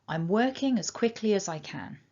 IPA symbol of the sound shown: ə